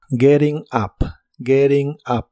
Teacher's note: la t del verbo Getting en inglés americano se suele pronunciar como r y la u de Up se pronuncia como a Getting up